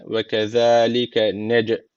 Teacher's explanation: Nec derken cim harfi çezim aldığı için. Burada kalkale tecviti var. Hafif bir vurguluyoruz.